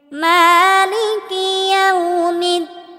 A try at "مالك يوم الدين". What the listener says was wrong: একালিফ টেনে পড়তে হবে। অনেকেই আমরা বলি মালিকি, একালিফ টেনে পড়তে হবে। মালিকি ইয়াউমিদ্দিন। মালিকি ইয়াউমিদ্দিন।